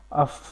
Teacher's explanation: فا میں جو ہے آپ کی سانس جاری رہ رہی ہے، ٹھیک ہے، اور آواز میں پستی آ رہی ہے. ٹھیک ہے، حمزہ فا زبر اف. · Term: حروف محموسہ